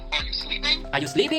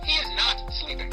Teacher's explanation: Notice how my voice goes up at the end of a question · Notice how my voice comes down at the end of a sentence and is not a question